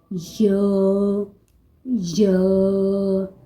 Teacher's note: جوف دہن یعنی منہ کے اندر کا خلا سے یا ادا کیا جاتا ہے